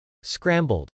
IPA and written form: skrˈæmbəld (scrambled)